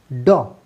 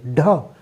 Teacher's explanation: इसको हम लोग बोल के देखें, जीभ हमारी मूर्धा यानी तालु के जस्ट पीछे ड, तुरंत हमारी जीभ वापिस आ रही है मूर्धा को टच करके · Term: द्विगुण व्यंजन